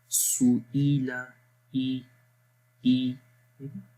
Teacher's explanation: حمزہ کی آواز کو بھی دیکھیں، سو ای لا، ای ای، گلے کے سب سے نیچے والے حصے سے آواز آ رہی ہے